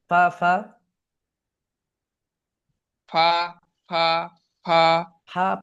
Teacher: ফা ফা ফা ফা ফা, ফা না ফা ভাই, ফা নয়, বাতাস চালু রাখেন, আপনার ওপরের দাঁত নিচের ঠোঁটের ভেজা অংশতে টাচ লেগে ফা